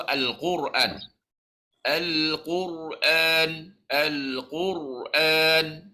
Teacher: Naikkan pangkal lidah. Jadilah dia tebal.